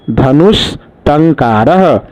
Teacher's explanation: धनुः जोड़ टंकारः में विसर्ग के बाद ट आ रहा है, ट हलंत, इसलिए विसर्ग मूर्धन्य सहलंत में बदला। तो आंसर बना धनुष टंकारः।